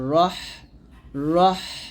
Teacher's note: র টাকে মোটা করে ধরতে হবে এর কারণ হচ্ছে মাঝখানে একটা আলিফ আসছে তো এই আলিফটা আসার কারণে আমরা র টাকে মোটা করবো হা